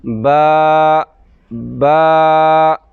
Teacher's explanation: ایک الف کی مقدار ہے، ایک الف لمبا کریں گے اور آرام سے چھوڑ دیں گے، جھٹکا بھی نہیں دیں گے۔ · ایسے ہونٹ بند ہوں گے، ایک الف کی مقدار پہ کھینچ کے لمبا کریں گے۔ ہونٹوں کا اندر والا حصہ جو ہر وقت گلا رہتا ہے اس جگہ سے ادا ہوگا۔